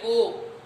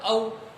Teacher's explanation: ओ और औ दोनों वर्ण, दोनों स्वर वर्ण है, दोनों ही वर्ण कंठ तथा ओष्ठ यानी होठों से बोले जाते हैं, अतः इन्हें कंठ ओष्ठ्य वर्ण भी कहते हैं।